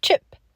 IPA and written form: tʃɪp (CHIP)